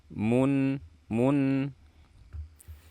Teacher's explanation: gunnah sifatnya mim dan dia bersifat bainiyah, artinya suaranya dialirkan sedikit